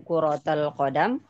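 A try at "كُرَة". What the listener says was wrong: Kurah laisa kurrah ya. Duna tasydid. Enggak ada tasydid. Ini jamak tapi ya, maksudnya di beberapa yang ada di pesantren biasanya memang di tasydid, nggak tahu kenapa. Padahal sebenarnya nggak di tasydid.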